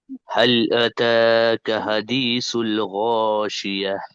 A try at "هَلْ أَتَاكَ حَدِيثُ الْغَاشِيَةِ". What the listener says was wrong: وہ بولے تو تین حرکات ہو گئے وہ۔ هل اتاک حدیث الغاشیہ، دو حرکات کھینچنا، اس سے زیادہ نہیں کھینچنا۔ عطا نہیں، هل اتاک حدیث الغاشیہ۔